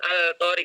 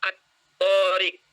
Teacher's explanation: alif lam ini dileburkan ke huruf yang ada di depannya. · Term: alif lam syamsiyah